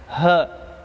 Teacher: ha dikeluarkan paling ujung, paling bawah, pangkal tenggorokan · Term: huruf ha